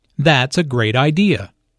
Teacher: notice the emphasis on great